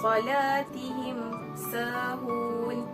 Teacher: huruf mim tersebut hanya perlu disebut secara jelas dan tidak perlu didengungkan